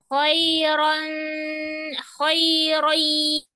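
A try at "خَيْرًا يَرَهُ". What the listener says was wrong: nah, dipanjangkan ya, dipanjangkan 2 harokat. Nah, putus tadi ya. Khoirohu.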